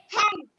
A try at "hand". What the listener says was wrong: Not hen. H-A-N-D. Hand, yes. A says A. H-A-N-D. Hand. H-A-N-D. Hand. H-A-N-D. Hand. H-A-N-D. Hand.